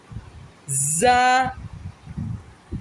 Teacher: سامنے والے اوپر نیچے کے دانتوں کو دبا کے زبان کو پیچھے رکھ کے زا ادا ہوگا سختی سے۔